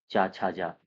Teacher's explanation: ये सारे के सारे तालव्य है